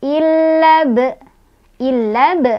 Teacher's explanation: Ada kokolah sugro. Karena ada huruf kokolah yang sukunnya sukun asli, yaitu huruf ba ya. Sukunnya bukan karena berhenti. Bacanya dipantulkan, pantulannya kecil.